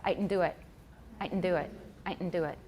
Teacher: it's a nasalized glottal stop